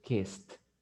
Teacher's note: Esa ED se va a pronunciar como una T, kissed. Ahora, ¿qué pasa con los otros?